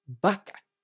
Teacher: these two letters, the B and the V, have the same sound in Spanish. Both letters must be pronounced using both lips.